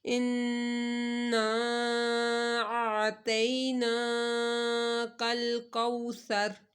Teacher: نون کے اوپر غنہ کر کے الف کو کھینچیں